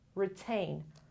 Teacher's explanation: The stress is on the second syllable.